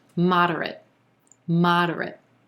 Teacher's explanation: we're going to get an unstressed er in that second syllable and then the last syllable just sounds like the word it